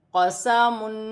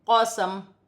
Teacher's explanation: وقف کی صورت میں دو پیش کی تنوین گر جائے گی اور میم ساکن ہو جائے گی